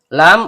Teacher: Lam ujung lidah bertemu dengan langit-langit bagian depan